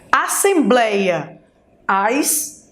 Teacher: o blei é a penúltima sílaba, ou seja, paroxítona.